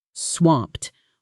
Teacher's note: One strong syllable, almost like a small explosion of air.